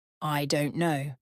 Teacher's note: three falling tone I don't know certainty or finality